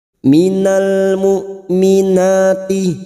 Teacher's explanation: Huruf hamzah sukun memiliki sifat siddah, yaitu tertahannya suara ketika mengucapkan huruf tersebut.